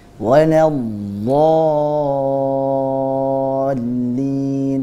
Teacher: Jangan walad berhenti do, tapi ada sifat namanya rakhawah, mengalir suaranya. Waladdallin.